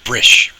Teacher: The B is slender because the closest vowel is an I, and the R is slender. So I'm doing a tight r instead of a broad ra.